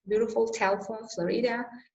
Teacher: the word beautiful would be loud, soft, soft. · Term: syllable stress